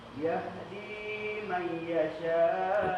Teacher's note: Tetap idgham ma'aghunnah, tidak boleh hilang.